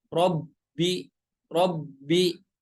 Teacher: bertasydid harus ada nabroh atau hentakan